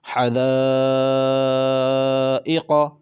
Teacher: اب اس کے اندر بھی مد متصل کا قاعدہ ہے، کیونکہ یہاں پر بھی حمزہ اسی کلمے میں ہے مد متصل کے بعد، تو یہاں پر مد ہے، اس کو بھی کھینچ کر پڑھا جائے گا